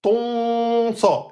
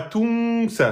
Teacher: Tung, c'est une nasalisation amincie.